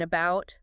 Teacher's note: It's the lazy vowel sound in unstressed syllables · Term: schwa